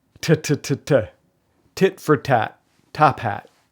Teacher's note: T as in top hat. That's a voiceless stop. Plosive.